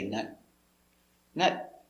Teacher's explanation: now this is a stop t so you don't say nut you stop